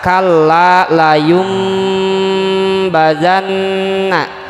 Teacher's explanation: tanwin dhomah atau disebut fathatain kasratain dhommatain bertemu dengan huruf ba cara membacanya yaitu dengan menyuarakan lafadz nun mati atau tanwin menjadi huruf mim